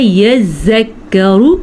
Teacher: زال کی شد بھی ادا کرنی ہے اور کاف کی شد بھی ادا کرنی ہے